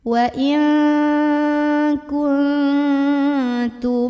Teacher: syafawi karena ada mim sukun yang bertemu dengan huruf Ain maka mim sukun nya ini kita bunyikan dengan jelas m dan tidak perlu ditahan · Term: izhar syafawi, idhar syafawi